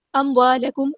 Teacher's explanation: الف مدایا to count لمبا کریں گے